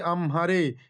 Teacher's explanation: আমারে হয়েছে আমহারে, এখানে হ এর আগমন ঘটেছে। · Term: ধ্বন্যাগম